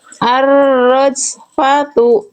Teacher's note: Kalau ada bunyi apa bentuk seperti ini awal ayat ya, awal kalimat kita baca alif lam ya. Si bunyi hamzah wasal ini dibaca vokal aa enggak mungkin i, enggak mungkin u. · Jimnya apa kesalahannya? Ada bocor nafas ya. Ada becek-becek nafas ya. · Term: hamzah wasol